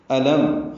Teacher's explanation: الم حمزہ اقصی حلق سے ادا کریں گے، میم ساکن پہ اظہار شفوی ہے.